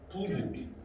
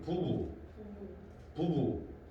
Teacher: 얘를 펼쳐서 보면 모음과 모음 사이에 얘가 위치한다고. 두 번째 나오는 비는 요 모음과 모음 사이에 위치함으로써 어떤 소리가 되느냐? 유성 파열음이 돼.